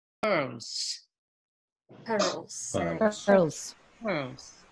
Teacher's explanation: The Z sound takes the place of, it turns into a S, pure S sound in words like pearls. If you say pearls thoroughly, the whole word, it actually ends in a Z sound, not a S.